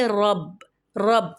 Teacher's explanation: را کے اوپر زبر ہے، را پہ جب بھی زبر یا پیش ہے تو را کو پر یعنی کہ موٹا پڑھتے ہیں، آگے با پہ شدہ یعنی کہ تشدید، را کو با سے ملا دیں گے، رب، رب. دیکھیں قلقلہ نہیں ہوتا ہے تشدید والے حرف میں، بس جماؤ کے ساتھ پڑھتے ہیں، قلقلہ نہیں کرتے.